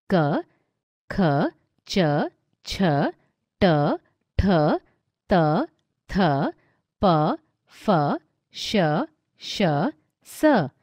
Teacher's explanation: जिन व्यंजन वर्णों को बोलते समय केवल श्वास का प्रयोग होता है और स्वर तंत्री में कंपन नहीं होता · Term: अघोष